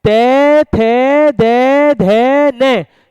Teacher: इनके उच्चारण में जीभ का अग्रभाग दांतों को स्पर्श करता है, इसलिए दंत्य हो गए।